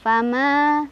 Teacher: asli karena ada Alif sebelumnya ada huruf berbaris Fathah di mim cara bacanya panjang dua harakat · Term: mad thi'i